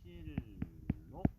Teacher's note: 2번은 니은하고 리을하고 만나서 앞에 있는 니은이 뒤에 리을, 유음의 영향을 받아서 리을로 바뀌는 유음화 현상에 해당됩니다. 그래서 발음을 하면은 실록 이렇게 되기 때문에 이것은 유음화에 해당이 된다라는 걸 우리가 확인할 수가 있죠.